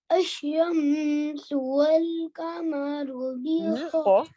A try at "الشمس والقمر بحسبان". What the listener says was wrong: Qaf. Don't forget the qaf.